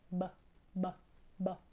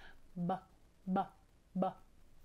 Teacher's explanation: Letter B is a consonant letter, and you make this sound by pressing your lips together and blowing air through your lips as you say b, b, b with your voice